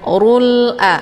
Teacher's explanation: Urul di sini ada alif lam, namanya alif lam al-qamariyah, karena sesudah alif lam terdapat huruf qamariyah yaitu a. Cara bacanya, alif lamnya dibunyikan secara jelas atau jelas bunyi l-nya. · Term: izhar qamariyah